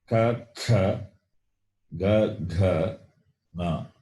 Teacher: Na is guttural plus nasal, throat plus nose.